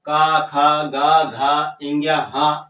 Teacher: गले से बोला जा रहा है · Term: कंठ